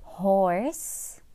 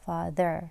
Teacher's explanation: الفرق بأن اللي في horse الشفتين دائرتان أكثر، أما father ليست دائرتان